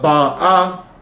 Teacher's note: The stress is on the ah at the end. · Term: midra